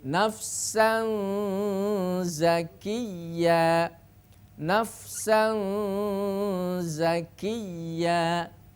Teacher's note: Makanya hati-hati untuk melafalkan huruf ya dan wawu musyaddadah, ya, dengan suara ditekan, jangan sampai suaranya seperti pelafalan idgham bi gunnah